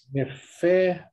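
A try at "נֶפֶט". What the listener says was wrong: What's your last letter there? Nefet.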